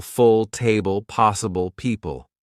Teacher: let your tongue relax back. Don't push a bright clear L at the end. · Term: dark L